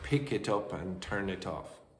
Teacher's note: So, you'll have pick it up and turn it off. The final consonant of the first word catenates or chains itself onto the next word. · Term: catenation